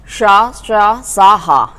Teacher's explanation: जब इन्हें हम उच्चारित करते हैं तो हमारी श्वास वायु है वो एक घर्षण के साथ, एक रगड़ के साथ बाहर आती है, तो जिससे गर्म ऊष्मा निकलती है, तो इस कारण ये ऊष्म वर्ण कहलाते हैं।